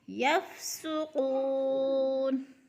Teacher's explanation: قو پہ وہ مدہ ہے، کھینچ کر، وہ ساکن سے پہلے قاف کے اوپر پیش ہے تو وہ مدہ، یعنی 2 الف کے برابر کھینچ کر پڑھنا ہے